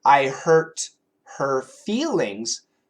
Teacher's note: when those words are in the middle of a sentence, very frequently we cancel the H sound. If the word is at the beginning, we usually keep it.